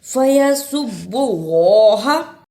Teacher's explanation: زبر ہا فیسب اللہ اللہ کو اس لیے پر پڑا کہ اللہ سے پہلے پیش تھا، اس لیے اس اللہ کو موٹا یعنی پر پڑھنا ہے